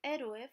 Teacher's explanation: We have an O, which is a abierta, plus an E, which is abierta. The syllable gets broken. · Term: hiatus